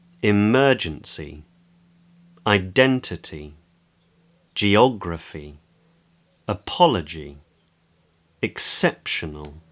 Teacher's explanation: the stress often falls on what’s called the antepenultimate syllable (which is the second before last)